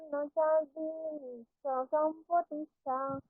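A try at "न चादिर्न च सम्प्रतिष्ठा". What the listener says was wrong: হলো না এখানটা, নান্তো ন চাদির ন চ সম্প্রতিষ্ঠা, ন চ চকারটা শোনা যাবে।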